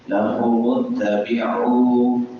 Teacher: لہو متبعو آگے عین لمبی ہو رہی ہے کیونکہ واو مدہ ہے، واو ساکن ما قبل ضمہ ہے، پیش ہے، تو اس واو کو لمبا کریں گے